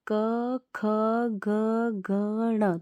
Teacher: इनको बोलते समय स्वर जो है हमारे कंठ से निकलता है। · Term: कंठ वर्ण